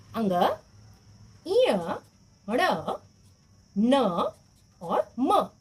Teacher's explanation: ये पांच व्यंजन मुख्य रूप से हमारे नाक में से आवाज आती है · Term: अनुस्वार